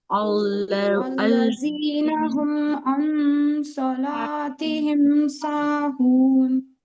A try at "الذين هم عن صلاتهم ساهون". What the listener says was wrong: इख्फा सही से करिए। इख्फा की मिकदार भी एक अलिफ के बराबर है। الذين هم عن इस तरह। الذين هم عن صلاتهم ساهون